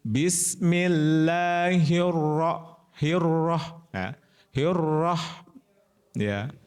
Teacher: Rnya tebal, manya tipis lagi. Rah ma ma ma mair nir tebal lagi rnya nir ya.